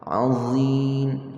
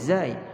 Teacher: za huruf yang tebal. Hujung lidah, hujung gigi depan. Tetapi bahagian belakang lidah kita itu kita angkat sikit.